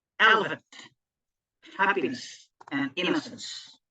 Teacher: consisting of three syllables, where the first is stressed and the next two are unstressed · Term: tactile